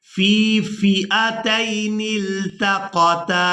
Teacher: पहली फ़ा को याई मद्दा की वजह से खींचकर अदा करेंगे